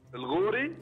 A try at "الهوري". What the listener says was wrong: لا الهوري بالهاء الهوري